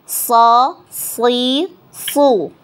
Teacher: Temannya makhrajnya sama dengan sa ya, sin. Nah, cuma huruf so ini pangkal lidahnya naik ya.